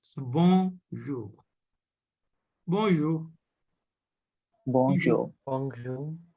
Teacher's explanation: this N is a nasal sound here. It is not pronounced.